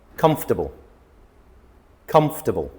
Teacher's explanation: there's a vowel in the middle that is not pronounced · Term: missing middle vowel words